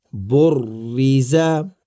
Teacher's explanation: ویسے تو را موٹا پڑھا جاتا ہے، لیکن را پر جب کسرہ آ جاتی ہے، یعنی کہ زیر جب آ جاتی ہے را پر، تو را کو باریک کر دیا جاتا ہے۔